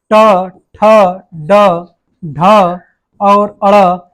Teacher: मूर्धा से बोली जाती है। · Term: मूर्धा ध्वनियां